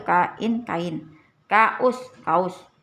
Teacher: Vokal yang berurutan dalam satu kata. Setiap vokalnya masuk ke dalam suku kata yang berbeda nih. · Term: deret vokal